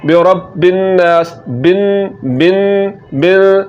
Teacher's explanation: مشدد اس حرف کو کہا جاتا ہے جس حرف پر شد ہو، تو یہاں پر نون کے اوپر شد ہے، تو نون کے مشدد ہونے کی وجہ سے یہاں پر غنہ ہوگا۔ تو اب جب ہم با کو نون کے ساتھ ملائیں گے تو بن جائے گا برب الناس، بن بن بن۔